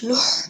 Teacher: হা উচ্চারণ গলার মধ্যে শো করে শব্দ বের হবে বাতাস বের হবে লাম পেশ লুহ লাম হা পেশ লুহ এটা হচ্ছে গোলহা গোল